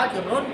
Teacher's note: اب اج رن کو اج رو کم از کم نہیں پڑھنا، اج رن پڑھنا ہے، لیکن ایک الف کے برابر ناک میں آواز نہیں رکھنی، بلکہ اج رن پڑھ کے اور آگے نکل جانا. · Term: اظہار